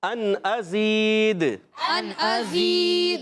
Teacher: غنہ نہیں کریں گے. ازید حمزہ کو خوب ظاہر کریں گے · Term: اظہار حلقی